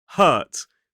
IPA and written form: hɜːt (hurt)